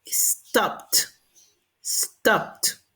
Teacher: Por ejemplo, stop termina en P. Los que terminan en P, la pronunciación ED va a ser en T.